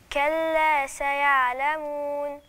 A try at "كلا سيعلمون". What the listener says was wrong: فين النون؟ لازم اعمل توسط، عشان لو ما عملتش توسط النون ايه مش هتبان من صفاتها كده. سيعلمون.